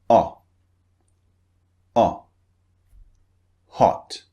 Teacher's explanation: the second one is very very short very brief it's just a burst of air as we've heard before in · the mouth is slightly rounded not very rounded but slightly rounded